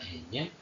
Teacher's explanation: es alveolar nasal y es blanda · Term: nasal blanda ñ